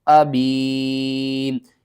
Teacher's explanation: یا ساکن سے پہلے زیر ہے، 1 الف کے برابر آپ نے کھینچنا ہے